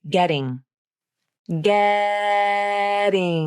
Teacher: enough time to prepare to move into the flap position then feel how quickly the tongue tip flaps against the roof of the mouth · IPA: /ɾ/, ɾ